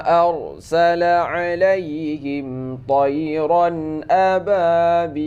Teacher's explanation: Nah, ini rad tebal ya, saat sukunnya karena ini baris fathah.